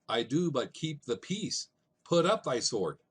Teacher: unstressed followed by stressed syllables there's five repetitions of that for a total of 10 syllables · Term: iambic pentameter